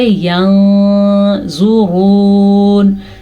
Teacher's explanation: نون ساکن کے بعد زوا حروف اخفا میں سے ہے تو نون ساکن کی آواز کو ہم کسی حد تک چھپائیں گے اور غنہ بھی کریں گے.